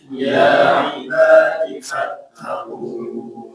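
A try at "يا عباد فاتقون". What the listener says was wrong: Nah, u-nya itu jangan gunah ya. Fattaqun. Nah, nunnya baru gunah. Karena di sana masih mat ya. Tapi di sini ada tanda jim, teman-teman. Al-waqfu al-jaiz. Maksudnya ya boleh berhenti, boleh juga apa? Disambung.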